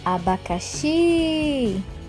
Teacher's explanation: A sílaba tônica é a sílaba emitida com mais ênfase, sendo que em cada palavra só pode haver uma sílaba tônica. Por exemplo, na palavra abacaxi, a sílaba tônica é o xi.